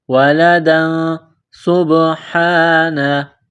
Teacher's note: اتَّخَذَ اللَّهُ وَلَدًا سُبْحَانَهُ، دال کے اوپر 2 زبر تنوین ہے، تنوین کے بعد سین ہے تو یہاں پر اخفا کریں گے، آواز ناک میں چھپائیں گے